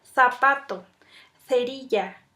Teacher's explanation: el sonido se forma por medio de un estrechamiento de los órganos articulatorios sin que estos lleguen nunca a juntarse. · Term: fricativas